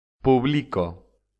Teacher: la sílaba fuerte es la penúltima son las llamadas Llanas